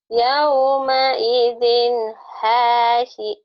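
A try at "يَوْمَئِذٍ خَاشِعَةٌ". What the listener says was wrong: Shinnya mana?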